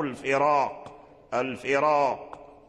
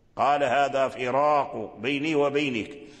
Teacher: الذي جعل الراء مفخمة هو القاف، لأن حرف القاف مفخم، قاف مفخم، فتفخيم القاف وتفخيمه قوي، فهذه القوة تسربت ورجعت حتى إلى الراء الذي تقدمه كسر.